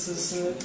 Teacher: 滋要很用力，是吧？对吧？滋滋滋都是很用力的， 你舌头要贴着这个齿根去发音